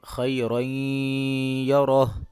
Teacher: را کے اوپر 2 زبر آ رہی ہیں تو را کو پر کر کے پڑھیں گے، آگے پھر را کے اوپر زبر ہے تو پھر را کو پر کر کے پڑھیں گے۔ یا ساکن ہے اور اس سے پہلے زبر ہے تو اس کو تھوڑا سا کھینچ کے پڑھیں گے، یہاں پہ لین ہو رہا ہے، اور را کے اوپر 2 زبریں ہیں یعنی کہ تنوین ہے، تو آگے اس کے حروف حلقی بھی نہیں ہے اور را اور لام بھی نہیں ہے، تو ڈیفینیٹلی یہاں پر غنہ ہوگا یعنی کہ اخفا ہوگا، ناک میں آواز کو چھپائیں گے، یعنی خیرین یرہ۔